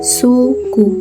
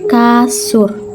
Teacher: yang ketiga fonem u fonem ini mempunyai dua macam realisasi yaitu bunyi u apabila berada pada silabel terbuka seperti kata suku dan bunyi huruf u kapital apabila berada pada silabel tertutup seperti pada kata kasur yang keempat fonem e fonem ini mempunyai